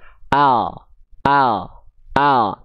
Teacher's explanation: Bukan cuman ujung akhir lidahnya saja, tapi dari tepi lidah bagian depan yang kanan menyusur sampai ke ujung lidah, begitupun tepi lidah bagian depan kiri menyusur sampai ke ujung lidah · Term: huruf lam